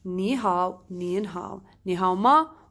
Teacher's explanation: if you have a third tone with the third tone you change it to become second tone with third tone only on pronunciation